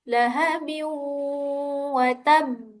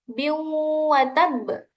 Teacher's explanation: dibaca dengung biu wa tab karena ada tanwin bertemu dengan salah satu huruf idgham yaitu waw